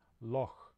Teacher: it's made at the soft palate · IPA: /x/